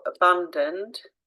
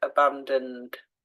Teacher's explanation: we don't hear that E when we say it out loud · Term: unstressed sound